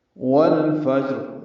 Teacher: فا کی وجہ سے، فا حروف قمری میں سے، فا کو جیم سے ملانا ہے، جیم ساکن ہے، اس پہ قلقلہ ہوگا · واو ہونٹوں کی نا تمام گلائی سے ادا ہوگی اور لام ساکن پہ اظہار قمری ہوگا۔